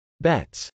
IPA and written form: bˈɛts (bets)